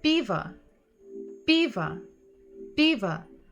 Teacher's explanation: even if we hear at the end sound A, we know that it's probably O because it's not stressed · The first letter is stressed, the first syllable is stressed.